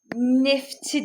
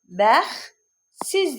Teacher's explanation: Samit olanda t samiti düşür.